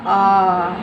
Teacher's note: देखिए, अ को बोलने में आपको एक मात्रा का समय लगता है और आ को बोलने में हमें दो मात्राओं का समय लगा